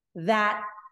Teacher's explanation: we just put our tongue behind the teeth in the position of the T, but we don't release the T, right? So if I say that, it's right there, but I hold the position and then I stop the air.